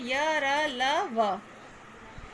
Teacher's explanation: जिन व्यंजनों का उच्चारण करते समय जीभ पूरी तरह से मुख के किसी भाग को नहीं छूती वे अंतस्थ व्यंजन कहलाते हैं।